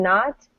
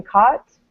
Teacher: the o in not and the a u in caught not caught these are almost the same sound right they rhyme